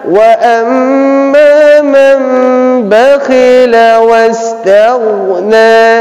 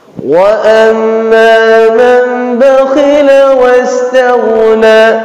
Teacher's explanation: dia disertai dengan dengung tapi dengungnya itu takarannya tidak boleh lebih dari 2 harkat. Tidak boleh kita bacanya panjang. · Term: iqlab